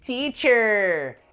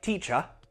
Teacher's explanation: in American English, the sound has a very strong R, but in British English, it doesn't.